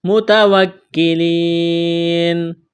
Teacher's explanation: یا مدہ ہے، ایک الف کے برابر کھینچنا ہے، وقف کریں گے، نون کو ساکن کریں گے۔